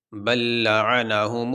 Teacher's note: یہ لام ساکن ہے اور اس کے بعد یہ لام متحرک آ گیا، تو اس لیے ہم نے اس لام کو اس لام میں داخل کر دیا۔ اب یہاں پہ ایک ہی لام پڑھا جائے گا اور اس